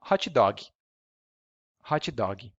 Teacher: we always insert an e just to make it easier to pronounce